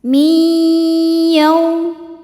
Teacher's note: Cara bacanya nun dileburkan ke ya. Masukkan ya kemudian tahan dengungkan. Min yau yau ada harfulin sebab ada wau sukun sebelumnya baris fathah. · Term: idghamunah, idgham bi gunnah